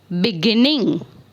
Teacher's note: we give the stress on the center the second syllable of the verb